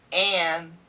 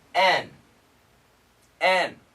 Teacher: the perfect pronunciation an but the typical pronunciation n